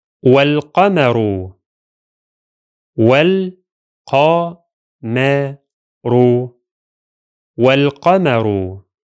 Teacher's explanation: In the case of the lunar lam in the word al-qamar, the hamza becomes silent and we jump directly from the wa to the lam · The hamza of al is silent while the lam is pronounced.